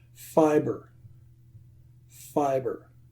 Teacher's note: My lips are touching, so it has to be a B.